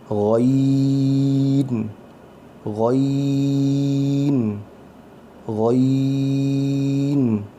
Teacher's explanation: گاف کی طرح آواز نہیں آنی چاہیے. غو موٹی آواز ہوگی.